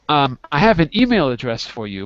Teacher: So I put the stress on email.